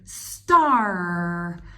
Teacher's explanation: we don't really hear this A very much. We just hear the R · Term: Bossy R